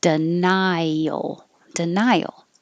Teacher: your tongue goes very high and then has to slide down and make a y